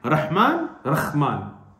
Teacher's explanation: they've changed the ha into a kha, very clearly